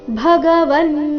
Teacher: ಭ ಇಲ್ಲಿ ಮಹಾಪ್ರಾಣ ಹ್ರಸ್ವ ಬ ಬೇಡ ಭ ಎಂದು ಬರಬೇಕು.